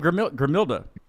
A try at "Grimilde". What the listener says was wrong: Gotta roll your R's.